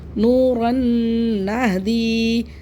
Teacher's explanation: مثال نوراً نہدی، یہاں پہ اس میں پورا غنہ ہوتا ہے، یعنی کہ ادغام تام ہوتا ہے، یعنی کہ پورا ہی غنہ ہوتا ہے، یعنی کہ پوری مکمل آواز ناک میں چلی جاتی ہے. نوراً نہدی، دو زبر کی تنوین کے بعد نون آ رہا ہے ینمو کے حرفوں میں سے، ینمو کے حرفوں میں سے نون آ رہا ہے، دو زبر کی تنوین اس کے بعد نون آ رہا ہے، تو یہاں پہ ہم تنوین کے راء کو نون سے ملائیں گے بھی اور غنہ بھی کریں گے.